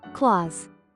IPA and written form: klɔːz (clause)